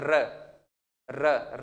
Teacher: पूरे व्यंजन में र ऐसा है जिसको बोलते समय एक विशेष प्रकार का वाइब्रेशन पैदा होता है।